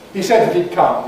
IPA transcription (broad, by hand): hi ˈsed ðət id ˈkʌm